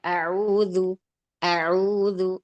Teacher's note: Baik, yang pertama yang diperhatikan di isti'adzah ini, di huruf hamzahnya, jeda ke huruf ain jangan terlalu lama ya, nanti kalau dibaca seperti itu seperti pertanyaan.